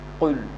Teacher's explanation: জিহ্বার গোড়া এবং তালুর নরম অংশ থেকে এটা উচ্চারিত হবে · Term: কফ